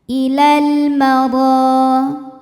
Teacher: Kemudian ada hukum alif lam yang dinamakan dengan alif lam qamariyah. Karena alif lam menghadapi huruf qamariyah yaitu mim. Maka lam sukun kita bunyikan dengan jelas.